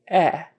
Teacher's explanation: your jaw is not as far down as short a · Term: short e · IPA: /ɛ/